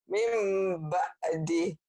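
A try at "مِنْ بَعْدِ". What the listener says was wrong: Mim ba'di. Dihentikan jadi mim ba'ad ya. Mim ba'ad. Mim ba'ad. Mim ba'ad ya.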